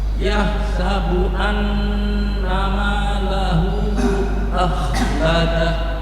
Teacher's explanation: Kha-nya ditebalkan akhladah karena jatuh setelah fathah